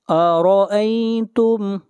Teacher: را کے اوپر زبر ہے، را کو موٹا پڑھا جائے گا